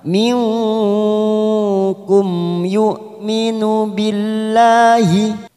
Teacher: nun sukun bertemu kaf lagi ikfa abad, samarkan bunyi nun sukun 3 harokat